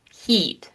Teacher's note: The tongue is higher for heat and it also tends to be more tense.